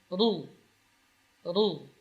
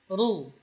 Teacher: Ra ketika berbaris dhammah maka dibaca tebal. Ru. Jadi bagian lidah bukan ujungnya, tapi bagian atasnya, ra'sul lisan, yang bersentuhan dengan gusi atas.